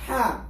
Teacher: Ha is from the middle of the throat